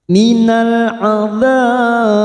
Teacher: Hukumnya qalqalah kubra yang mati di akhir kalimat, kita pantulkan